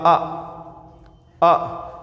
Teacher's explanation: और जब जीभ के बीच वाले भाग से ध्वनि का उच्चारण हो, हमने बोला अ, हवा में बिल्कुल जीभ है, फ्लैट है, हमने बोला अ, तो अ ना तो अगले भाग से ध्वनि और ना ही पिछले भाग से ध्वनि का उच्चारण हो रहा है। अ हमारा क्या है, मध्य स्वर।